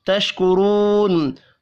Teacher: تشکرون، را کو پیش کی وجہ سے پر پڑھیں گے. واو مدہ کو ایک الف کے برابر کھینچ کر پڑھنا ہے.